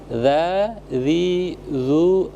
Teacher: dalal ya alladzi alladzi dza dzi zuz bad ya jadi eh tempat keluar hurufnya itu adalah ujung lidah disentuhkan dengan ujung gigi bagian atas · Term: huruf dza